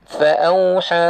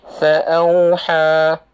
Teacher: Ada beberapa mat yang panjang. Kita nak baca 4 harakat. Fa'auha. Kalau berhenti, fa'auha.